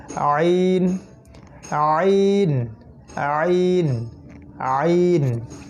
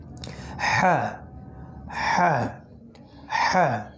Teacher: এটা হলো গলার একদম মাঝখান থেকে, একদম কণ্ঠনালীর মধ্যভাগ থেকে আমাদেরকে এই হরফ দুইটাকে বের করার চেষ্টা করতে হবে। যদি না আসে তারপরও চাপ দিতে হবে যেন এক সময় ইনশাআল্লাহ তাআলা বের হয়ে আসে।